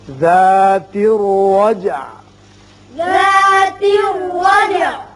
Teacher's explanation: جیم ساکن ہے اس کی صفت قلقلہ ادا کریں گے